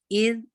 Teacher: इज जाल का बिल्कुल सा वाला मखरज है, tip of the tongue touch कर रहे हैं ऊपर के दो दांत को, दांत के सिरे को